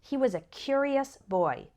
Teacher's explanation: the adjective form is curious the first syllable is strong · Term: strong syllable